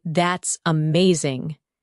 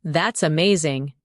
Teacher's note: When you say that's amazing, your tone rises with excitement